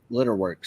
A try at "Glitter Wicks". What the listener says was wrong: Wicks. Glitter Wicks. You said Glitter Works.